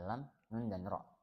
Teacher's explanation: Jadi kita mengucapkannya dengan menyentuh lidah di langit-langit gusi, di langit-langit mulut. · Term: depan lidah